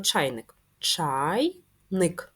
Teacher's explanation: чайник два склади Отже ділимо нашу звукову модель на два склади перший звук в слові чайник звук ч приголосний твердий